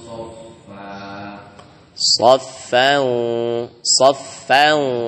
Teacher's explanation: Tebalkan karena sod setelah tanwin itu huruf sod tebal. Wajah rabbuka wal malaku soffan soffa.